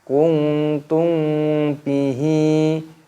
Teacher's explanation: nun sukun bertemu dengan huruf ta, yaitu hukumnya dibaca ikhfa. Ikhfa itu artinya samar, jadi cara membacanya yaitu dengan cara disamarkan